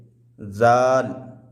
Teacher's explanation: زال زبان کے نوک کو اوپر والے دانت کے کنارے میں لگائیں گے، زال۔ اس کے بعد ہے زا۔